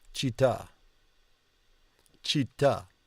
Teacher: Città. Because it's going to be the emphasis on the last syllable.